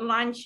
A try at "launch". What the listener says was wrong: Bukan launch. Launch tu makan tengah hari. Launch.